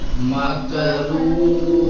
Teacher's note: واو مدی آ گیا تو اس کو واو کو تھوڑا سا پیش کے 2 برابر پڑھیں گے